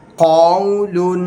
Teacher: قاف کو پر پڑھیں گے، حروف مستعلیہ میں سے ہے، اور آگے واو لین اس کو ہم نہیں لمبا کریں گے ، قول، فا یا زیر فی، ہا زیر ہی، فی ہی، · اس میں قاف کو پر پڑھیں گے، حروف مستعلیہ میں سے ہے